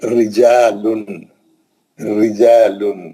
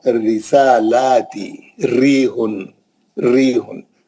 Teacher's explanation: جب بھی را پہ زیر رہے گی ہلکا پڑھنا